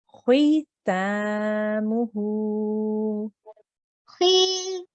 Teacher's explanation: the length of time of the ta is the same as the length of time of the hu, because they are both elongated or stretched sounds